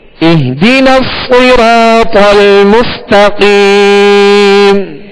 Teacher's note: صاد کو کیسے پڑھیں گے؟ پر پڑھیں گے، موٹا پڑھیں گے، اس لیے کہ یہ حروف مستعلیہ میں سے